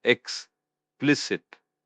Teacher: >> Explicit pronunciation is X P L I S it. The stress is on the second syllable.